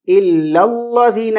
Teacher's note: پورے لام باریک، لام موٹا نہیں پڑھنا ہے